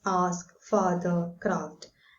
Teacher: a was lengthened before S and F